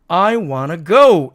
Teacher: 그래서 무성음 t가 탈락하고 여기 to에 원래 있던 o의 발음은 어로 이렇게 바뀐 거죠.